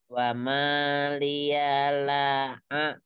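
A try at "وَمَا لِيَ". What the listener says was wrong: Iya, maknya jangan terlalu panjang. Wa mas satu dua harokat saja atau satu ayunan.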